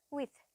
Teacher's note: එතකොට අපි ගත්තොත් with කියන වචනය, WITH කියන වචනය with කියද්දී අපි voiced th sound එකක් නෙවෙයි පාවිච්චි කරන්නේ, unvoiced th sound එකක්. එතකොට අපි with කියන එක pronounce කරද්දී අර vibration එකක් එක්ක පාවිච්චි කරන්නේ නැහැ th sound එක.